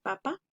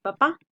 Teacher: En la primera palabra, la sílaba tónica, recordemos que la sílaba tónica es donde se hace la mayor fuerza de voz. En la palabra papa es en la primera sílaba pa. Y en la palabra papá es en la última.